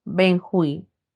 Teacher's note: al tener la mayor fuerza de voz en la última sílaba es una palabra aguda